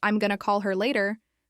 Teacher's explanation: the stress is usually on call and later. the other words sort of slip by quickly.